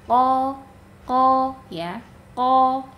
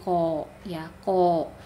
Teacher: bibir jangan dimonyongkan qo tapi pangkal lidah kita yang kita naikkan huruf ee untuk mendapatkan huruf istil'la huruf tebal. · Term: huruf qof